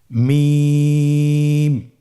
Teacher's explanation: দুই ঠোট চেপে ধরে আমরা উচ্চারণ করব